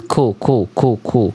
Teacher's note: Jelaskannya ku harus ada keluar nafas